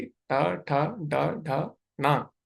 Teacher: थोड़ा सा जीभ को पीछे मोड़ेंगे तो यहाँ पे मूर्धा स्थान पे आपकी जीवा टच करेगी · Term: मूर्धन्य